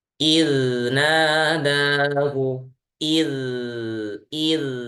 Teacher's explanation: Rokhawah, huruf dzal itu sifatnya rokhawah, bukan hams ya. Jadi rokhawah saja, tidak ada hamsnya. Jadi jangan sampai ada angin atau udara.